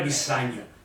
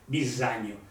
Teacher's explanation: E è in italiano una S sonora.